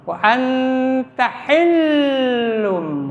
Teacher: Jadi wa an posisi lidah sudah di posisi ta. Ini didengungkan ya, namanya ifa awsat.